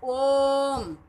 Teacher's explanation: इनके उच्चारण में ह्रस्व और दीर्घ स्वरों के उच्चारण से तिगुना समय लगता है, ट्रिपल टाइम लगता है। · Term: प्लुत स्वर